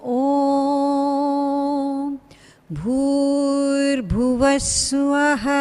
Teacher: We don't stress the Swaha, Suvaha, but make it into one syllable.